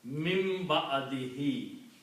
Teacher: So when you combine these two, this is the rule of iqlab, where that there is a ba and noon together, then this noon is pronounced as a mim